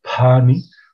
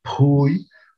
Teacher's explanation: en su pronunciación, ellos pronuncian una P aspirada